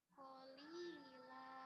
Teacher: bertemu Alif dibaca panjang namanya Mad thiii ill Qi nahli kasroh lamnya kan kasroh ya di bawah ketemu dengan ya mati jadi panjang